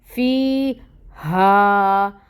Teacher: फ़ी हा, अब यहाँ पे जो हा है ये अक्सउल हल्क से अदा होगी और ये अलिफ साकिन है, इससे पहले फ़तह की हरकत है, ये भी 2 काउंट्स पढ़ा जाएगा।